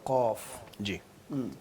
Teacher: لقد یہ قاف کو اتنا زور سے نہیں نکالتے اور اس کو گلے سے نہیں نکالتے. قاف جو ہے زبان کے آخری حصے سے جو گلے کے پاس ہوتا ہے وہاں سے نکلتا ہے. زیادہ پیچھے لے کے جائیں گے تو زیادہ خراب ہو جائے گا جیسے آپ کہہ رہے ہیں.